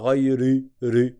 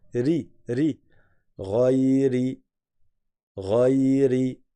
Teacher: Et le ra, il n'est pas emphatique parce qu'il a une kasra. On ne dit pas ghayri, ri.